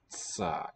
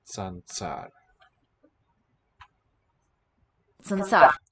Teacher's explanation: if you slow down how quickly you withdraw your tongue there from the T position, tsa, it develops this s in between.